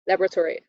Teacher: in its long-form laboratory so it's just the first one is the first syllable stressed and everything else just falls down